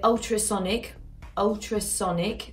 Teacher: more of a w to it than an l and it's going to be forward in the mouth